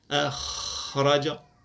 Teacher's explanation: هل تلاحظون ان فيه همسا ان الهمس يجري ان النفس يجري مع الخاء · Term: حرف مهموس